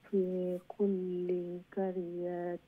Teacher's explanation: লাম তাসদিদ আছে, দুইবার পড়া লাগবে লাম একটা